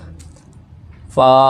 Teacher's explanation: اوپر والے دانتوں کے کنارے اور نچلے ہونٹوں کے تر حصے سے